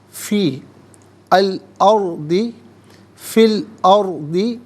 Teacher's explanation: را ساکن ما قبل حمزہ پر زبر ہے، را ساکن کو پر کر کے پڑھا جائے گا